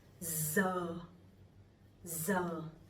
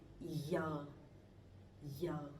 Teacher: So I'm from the north, I'm from Hanoi, so my pronunciation would be Z.